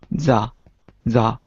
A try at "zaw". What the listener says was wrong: Not za, but zaw. Aw. Aw.